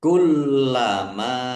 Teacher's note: lam tasdid ya dibaca dobel lamnya ada tasdid nya ditekan dan ditahan biar tampak dobelnya. Kullama mim fathah alif mad thobi'i panjang dua harakat.